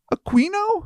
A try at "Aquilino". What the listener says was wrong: There's an L in there. Aquilino? There's an L in between those eyes.